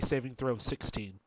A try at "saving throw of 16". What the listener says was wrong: you're sounding like you have a lisp. Oh, yeah, I just noticed.